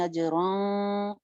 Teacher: इख्फा का तरीका आपको पता है, नून के मखरज के करीब जुबान लेके जाएंगे। अजरन बारीक इख्फा है, मोटा नहीं